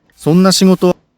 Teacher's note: Though not accented, as every word in Japanese, it naturally begins to rise from the second mora.